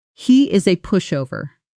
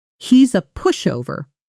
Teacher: Fast connected version, he's a pushover with he is collapsing into he's and the whole phrase almost gliding as one breath. Try saying it fast, casually, the way a friend would say it while gossiping lightly about someone.